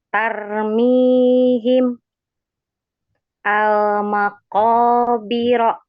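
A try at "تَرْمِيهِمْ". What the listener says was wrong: Nah, kalau yang tarnya ini terlalu banyak getaran. Tarmi. Ujung lidahnya kan, iya nggak apa-apa. Jadi ujung lidahnya cukup dikakukan saja di apa ya, di balik ini. Agak di balik. Tar agar kita tidak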